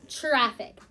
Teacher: Sometimes that TR sounds like chur, like CHR.